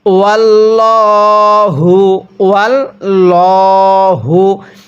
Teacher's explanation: ওয়াল্লাহু, ওয়াল্লাহু, এখানে কিন্তু আমরা এই আল্লাহ শব্দটাকে মোটা করে পড়ব, কারণ এই আল্লাহ শব্দের পূর্বে এখানে জবর আছে, আর এই আল্লাহ শব্দটার পূর্বে যদি জবর অথবা পেশ থাকে তাহলে এই পুরা শব্দটাকে আমাদের মোটা করে পড়তে হবে